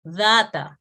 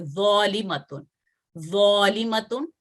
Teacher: اسی طرح آپ دیکھیں کہ ذال کی آواز جیسے میں نے آپ کو بتا دی کہ تفخیم سے پڑھی جاتی ہے, ذال نرمی سے اور ذو تفخیم سے پڑھا جاتا ہے